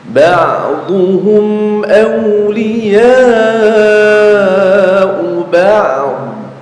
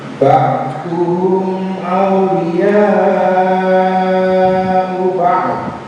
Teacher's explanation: Jadi sukunnya ain dibaca, sukunnya dhad juga dibaca. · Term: wakaf dua sukun